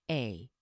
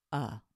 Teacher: might have noticed the pronunciation of a is a little odd when we're talking about the word or the letter we say a when we use that letter to be a word we pronounce it uh